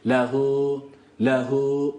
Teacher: zamir uzatır bir elif miktarı Med gizlidir burada gizlidir bir elif miktarı uzatıyoruz lahu lehu bir